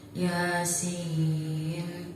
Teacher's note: Di situ ada mad yang terdapat dalam huruf ya, maka cara bacanya panjang. Panjangnya satu alif pada dua harokat. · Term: mad tabi'i harfi